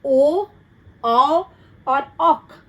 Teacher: आवाज गले से और होंठ की मूवमेंट से ध्वनि जो है वो बाहर निकलते है